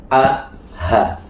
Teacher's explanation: Yang paling bawah namanya pangkal tenggorokan. Penghuninya ada dua, Hamzah dan ha.